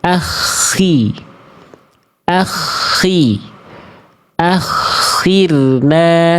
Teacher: kho itu ketika dia berharokat baris bawah, dia kan tafkhim nisbi. Ya, tafkhim nisbi, ketebalannya berkurang. Nah, udah mah kalau memang dia huruf tebal, ya, kalaupun dia memang tebal selalu, ketika kasroh tetap gak boleh monyong mulutnya.